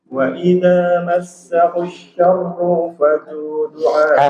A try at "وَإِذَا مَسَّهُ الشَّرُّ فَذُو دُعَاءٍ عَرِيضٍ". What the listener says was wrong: Kalimat syarru, ru-nya jangan dipanjangkan. Langsung fa. Ulang.